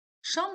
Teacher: Şam sözü kar samitlə başlayır